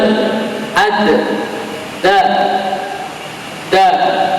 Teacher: ujung lidah menyentuh pangkal gigi seri atas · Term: dal